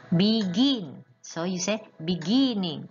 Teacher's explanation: It will become beginning because you stress on the gin.